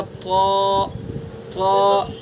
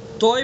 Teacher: بس طا کو منہ بھر کے پڑھیں گے چونکہ یہ حروف مستعلیہ میں سے ہے